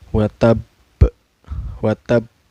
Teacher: cara bacanya dipantulkan dan pantulannya besar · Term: qolqolah kubro